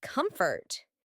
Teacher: Feel the gentle rise on the word comfort